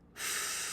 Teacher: Did you notice how I held the initial and final sounds for just as long as I held that middle vowel sound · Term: connected phonation